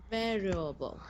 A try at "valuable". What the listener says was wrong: There you go.